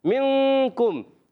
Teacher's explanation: منکم, نون ساکن قاعدوں میں سے قاعدہ, پھر اخفا کا قاعدہ, کیونکہ نون ساکن میں کاف آ گیا حرف اخفا میں سے, غنہ کرنا ہے